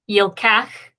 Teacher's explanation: So again, this, where we have the yod, would be an unaccented syllable, which means with that short vowel, it's going to be closed. The lamed is therefore closing the syllable, which means that the schwa underneath it, those two dots underneath, they're silent.